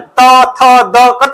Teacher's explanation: तो दांत में आता है। जीभ कहां जाता है? दांत में।